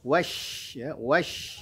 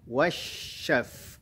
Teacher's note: Huruf shin juga punya sifat, di antaranya adalah rokhawah. Rokhawah bunyinya mengalir, kemudian hamas nafasnya mengalir, lalu kemudian ada sifat tafasyi dari huruf shin, ada suara yang berhamburan yang keluar dari mulut ketika kita mengucapkan huruf shin.